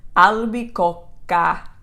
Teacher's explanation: That double C doesn't make any difference other than that you're going to rest slightly longer on that sound of the C. So you would say albicocca, okay, because of the two C's.